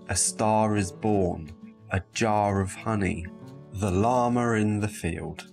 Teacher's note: if a word ends with an /ɑː/ sound and the next word begins with the vowel, when we're talking quickly, you will often hear a /r/ sound, an alveolar approximant, inserted between the two words